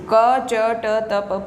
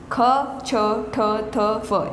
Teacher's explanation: अघोष यानी इनका उच्चारण करते समय घर्षण नहीं होता, कंपन नहीं होता।